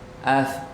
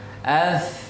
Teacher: itu masih baru hamasnya saja, baru nafasnya saja. Suaranya belum.